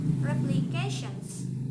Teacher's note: there is assimilation T because T here followed by ion